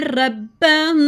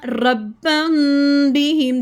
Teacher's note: اکفا میں آواز نوز میں چھپتی ہے، نرمی کے ساتھ سافٹ طریقے سے ادا کریں گے۔ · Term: اکفائے شفوی